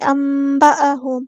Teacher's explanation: حمزہ کی آواز کو واضح ادا کرنا سختی کے ساتھ